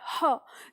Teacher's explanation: तो काकल्य वर्ण कहते हैं जिसका उच्चारण कंठ के भीतर से होता है, ठीक है, किससे होता है, कंठ के भीतर से। तो जिन वर्णों का उच्चारण कंठ के भीतर से होता है उन्हें हम काकल्य वर्ण कहते हैं।